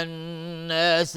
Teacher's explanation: نون مشدد 2 حرکت غنه میدیم